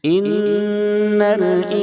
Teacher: ان الانسان نون ساکن ہے، اس کے بعد حروف اخفا کے 15 حرفوں میں سے سین ہے، اس لیے اخفاء حقیقی ہوگا، یعنی نون کی آواز کو ناک میں چھپا کر غنہ کے ساتھ پڑھیں گے